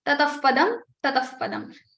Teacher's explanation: If after visarga you have pa or fa, then the upadmani sound, that is fa, will come in the place of visarga.